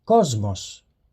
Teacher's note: a sigma will sound like the letter Z when it precedes one of the voiced consonants